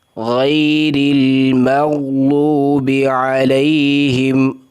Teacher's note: غین کو موٹا کرنا ہے، را کو باریک کرنا ہے۔ غیر المغضوب، میم کو باریک، غین کو موٹا کرنا ہے۔